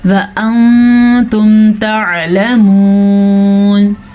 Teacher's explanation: نون ساکن کے بعد تا حروف اخفا میں سے آیا ہے تو ہم نون ساکن کی آواز کو چھپا کے پڑھیں گے. وَأَنْتُمْ تَعْلَمُونَ، عین کے مخرج کا خاص خیال رکھنا ہے.